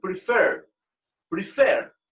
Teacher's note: tiene dos sílabas y fuerza de voz en la última parte en la última sílaba